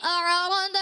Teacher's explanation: اعرض یعنی عین میں بھی قلقلہ نہیں کریں گے